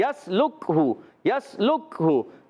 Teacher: یا کو سین سے ملائیں، سیٹی کے ساتھ ادا کریں گے. لام کو کاف سے ملائیں، کاف کو ساکن رکھنا ہے.